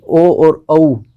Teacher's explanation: यानी कि ओ और औ, इनका उच्चारण स्थान रहेगा कंठ ओष्ठ से। ठीक है, क्योंकि कंठ अ और ऊ से मिलकर बनता है ओ, तो अ का उच्चारण स्थान हो गया अपने कंठ और ऊ का उच्चारण स्थान हो गया ओष्ठ, तो अ और ऊ दोनों मिले बन गया ओ, तो ओ का उच्चारण स्थान रहेगा कंठोष्ठ।